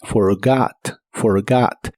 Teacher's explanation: la última o de esta palabra se pronuncia como una a profunda